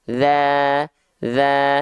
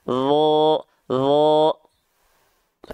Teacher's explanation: huruf do ini termasuk ke dalam huruf yang tebal atau disebut dengan mufakhamah atau tafkhim makanya ketika D berharakat fathah vokalnya o